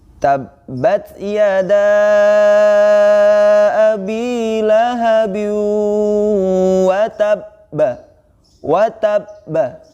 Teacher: cara membacanya adalah dengan memberhentikan sejenak, setelah itu baru dipantulkan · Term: qalqalah